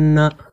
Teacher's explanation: এখানে নুনের উপরে তাজদিদ রয়েছে। এই নুনকে নাকের মধ্যে গুনগুন করে কমপক্ষে 1 আলিফ পরিমাণ বা 1 সেকেন্ড টেনে পড়ব, সেটাই হচ্ছে গুন্না।